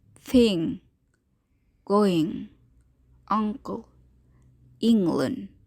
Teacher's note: This sound is never found at the beginning of a word. It is a voice sound made by the back of the tongue stopping against the soft palate. If you place your finger in front of your nose, you should be able to feel the expulsion of air through your nose, which makes it a nasal consonant.